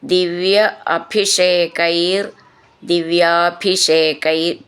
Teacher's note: ഭീ എന്നുള്ള അക്ഷരം നന്നായിട്ട് ഊന്നി പറയണം